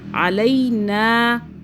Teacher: لین ہو رہا ہے، یہاں مدہ نہیں ہو رہی، مدہ کا مطلب کھینچنا ہوتا ہے